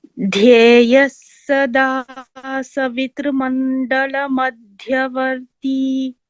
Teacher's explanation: So when we combine the sandhi, it should become dhyeyah sada. So instead of the visarga, another sakara is heard. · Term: विसर्गसकारसन्धिः